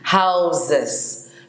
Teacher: The S is pronounced like a Z. Houses. It's not house, but houses, you know.